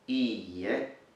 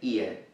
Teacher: The e sound is double, and that's really important because it's a distinctive factor from other words.